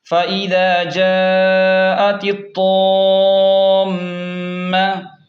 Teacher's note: تو زیر تط تو الف میم مدہ زبر طام میم زبر میم پر غنہ کریں گے کیونکہ میم مشدد ہے